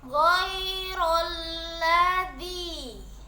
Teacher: Yang pertama lam yang berbaris sukun dan yang kedua lam yang berbaris fathah. Dan cara membacanya yaitu dimasukkan pada lam yang kedua. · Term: lam double